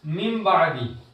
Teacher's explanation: अब यहां क्या बताया, देखो किताब के अंदर क्या बताया, नून साकिन या तनवीन के बाद हर्फ बा आ जाए तो इतलाब होगा, यानी नून साकिन और तनवीन को मीम से बदल कर इक्फा करें, यानी गुन्ना करके पढ़ें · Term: इकलाब